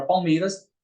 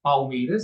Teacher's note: na palavra Palmeiras, o L ele tem um som de U. Ó, lembrando que vai depender do contexto.